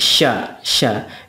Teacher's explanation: menjadikan huruf dibaca tebal SH si su seperti itu adapun syin syin itu hampir mirip juga dengan Sin hanya saja ada sifat plusnya yaitu tafasyi tafasyi itu artinya menyembur